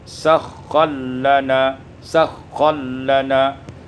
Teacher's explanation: Pada ayat yang ke-13, sakhkhara lana, idghamur ra fil lam menjadi sakhkhallana